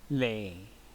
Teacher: the vowel of lay, a, is a monophthong